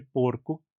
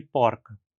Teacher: um O fechado no masculino singular e um O aberto em todas as outras formas